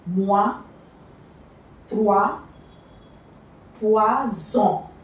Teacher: OI is pronounced as wa.